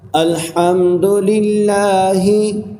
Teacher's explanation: حلق کا وہ حصہ جو سینے کی طرف والا ہے وہاں سے ہا ادا ہوتا ہے۔